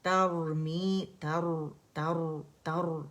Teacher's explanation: تر تر را موٹا پڑا جائے گا کیونکہ را سکون سے پہلے